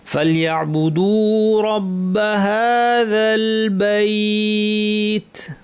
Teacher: শেষে তায় ছোট একটু বাতাস থাকবে